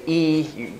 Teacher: when you say e you can feel that your tongue is tensing up and because it's tense here your tongue is particularly high the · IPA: /i/